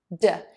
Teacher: So to say this syllable, start by touching the tip of your tongue to the back of your top front teeth, d. Your voice box is on and moving and vibrating for this sound